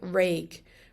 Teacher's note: But in Munster, there's a G sound here heard at the end, like rake, kind of like vague, but with an or, rake.